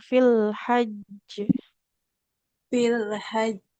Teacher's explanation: qalqalahnya karena ada tasdidnya dia agak ditahan dulu